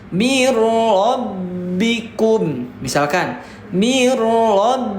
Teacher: Dikarenakan nun mati berhadapan dengan huruf ro dengan huruf idgam bila gunah, maka itu enggak boleh dibaca panjang. Enggak boleh dibaca seperti ini.